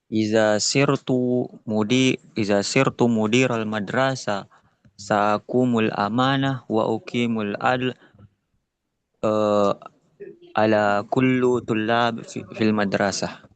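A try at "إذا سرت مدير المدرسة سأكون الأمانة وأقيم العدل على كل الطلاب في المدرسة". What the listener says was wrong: Masya Allah, Masya Allah. Masya Allah. Kalam jamil. Kalam jamil.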